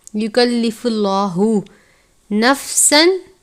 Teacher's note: लफ्ज़ अल्लाह के लाम से पहले पेश है, इसलिए लाम को पुर पढ़ेंगे और इस तरीके को तफ़ख़ीम कहते हैं, यानी पुर करके पढ़ना।